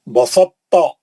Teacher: تا کو موٹا کر کے پڑھیں گے کیونکہ تو اس کے اندر گھسا ہوا ہے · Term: ادغام متجانسین ناقص